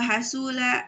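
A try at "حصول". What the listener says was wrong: Itu di doma ya. Hanya itu di doma, husulu. Bukan ha, bukan hasul tapi husulu.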